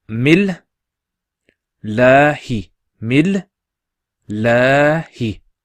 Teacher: Mil, la, hi. Mil, mim and the la join together. Mil, and the la stretched.